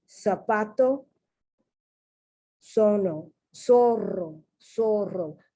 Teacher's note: In mostly all of Latin America, the theta is pronounced like an S. Theta. But in Spain, and I guess in parts of Europe where Spanish is spoken, the theta is pronounced like the TH, like I'm pronouncing it now.